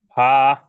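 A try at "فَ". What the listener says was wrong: টান হয়ে যায় কিন্তু টান নেই, ফা দ্রুত, ফা।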